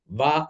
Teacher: వకారం అనేది దంతోష్ఠం అంటే మనకి వకారం పలికినప్పుడు వా అని పలికినప్పుడు పై పన్ను క్రింద పెదవికి తగలాలి